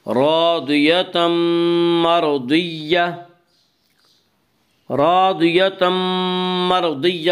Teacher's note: راضیتم مرضیہ میں ادغام بالغنہ ہوگا۔